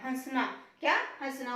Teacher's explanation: यहाँ पर जो है वो चंद्र बिंदु ही लगेगा, बिंदु नहीं लगेगा, क्योंकि इसकी ध्वनि जो है वो नाक और मुख दोनों से आ रही है